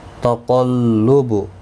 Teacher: قاف حروف مستعلیہ ہے، پر پڑا جائے گا